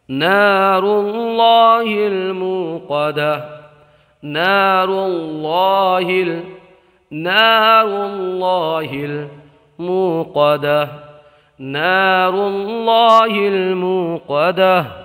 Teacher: اللہ کے لام سے پہلے ہر پر زبر یا پیش ہو تو اللہ کے لام کو پر پڑھتے ہیں۔ واو میں مدہ ہوگا، قاف کو موٹا پڑھیں گے، تا کو حالت وقت میں ہا سے بدل دیں گے، تا کو ہا سے بدل دیں گے، ساکن کر کے ہا ساکنہ سے بدل دیں گے۔